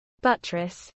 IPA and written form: ˈbʌt.ɹəs (buttress)